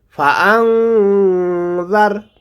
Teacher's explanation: সামনের ওপরের দুই দাঁতের আগার সঙ্গে লাগাইয়ে উচ্চারণ করতে হবে ফাআংজার এখানে গুণনা করব কারণ নুন সাকিনের পরে জাল এসেছে